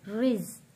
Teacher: را کے نیچے زیر ہے را کو پتلا پڑھیں گے